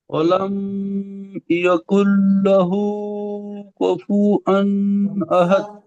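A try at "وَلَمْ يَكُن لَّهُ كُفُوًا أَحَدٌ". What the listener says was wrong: তো এখানে লামের থেকে একটু মানে গুন্ডা মতো হয়ে যাচ্ছে, ওয়ালাম বলে এরকম দাঁড়াবেন না। ওয়ালাম ইয়াকুল লাহু কুফুয়ান আহাদ।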